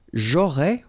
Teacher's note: final S not pronounced